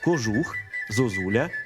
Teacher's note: звук о вимовляємо з наближенням до у перед складом з наголошеним у